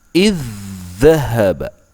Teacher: Cara membacanya adalah seolah-olah ada dhal dengan tashdid. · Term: idgham mutamathilayn saghir